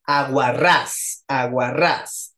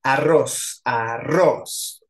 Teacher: tiene la tónica hasta el final, de izquierda a derecha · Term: aguda